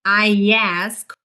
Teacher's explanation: We also insert an Y sound because I ends in a diphthong I